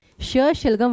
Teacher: श एक तो होता है फ्रेंड्स श। शलगम वाला जिसका उच्चारण स्थान होता है तालव्य।